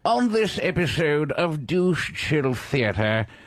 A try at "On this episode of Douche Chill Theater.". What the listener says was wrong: Higher higher pitch, please.